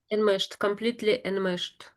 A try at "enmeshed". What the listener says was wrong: Yeah, that's quite good how you said that one.